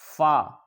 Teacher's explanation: اوپر کے دانتوں کے کنارے اور نچلے ہونٹ کے تر حصہ سے ادا ہوتا ہے